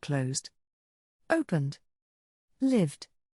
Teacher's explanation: the Ed is pronounced like a d without creating another syllable · The S sounds like a vibrating Zed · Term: the D sound